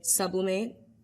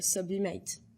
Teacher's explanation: the emphasis is more on mate than sub